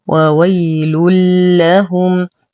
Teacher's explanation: ننتبه كثيرا للإدغام أن يكون بلا غنة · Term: الإدغام